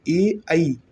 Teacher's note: ए और ऐ जो है वो कंठताल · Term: कंठतालव्य